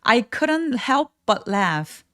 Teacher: help 할 때 피소리 가볍게 내셔도 되고 아니면 약간 끊어지는 느낌으로 help but laugh 하면서 피읍 받침처럼 그렇게 표현해 주세요.